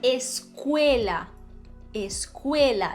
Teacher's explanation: Em espanhol, a E é cerrada. Sempre.